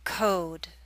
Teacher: Which vowel sound is longer? The O in code is longer.